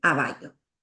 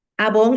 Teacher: el primer sonido con el que empieza la palabra no lo dice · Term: omisión de ataque silábico